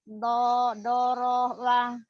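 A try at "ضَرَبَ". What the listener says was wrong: Doroba. Bagus. Doroba.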